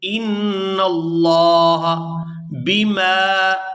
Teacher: نون مشدد پر غنہ کریں گے اور آگے لفظ اللہ کے لام کو پورا ادا کرتے ہوئے کھینچ کر ادا کریں گے